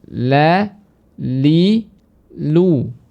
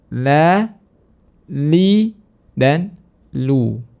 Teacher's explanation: Namun lam itu keluar dari ujung lidah bertemu dengan gusi atas